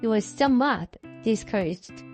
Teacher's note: the tonic accent on somewhat is a result of emphasis, contrast. 우리가 이 단어를 강조하기 위해서 여기다가 당연히 tonic accent를 줬겠죠.